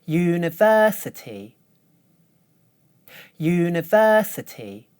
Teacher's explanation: the primary stress is on the third syllable. The first syllable has secondary stress. The other 3 syllables are unstressed.